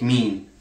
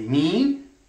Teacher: when we say mean the e sound is nasalized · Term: nasalization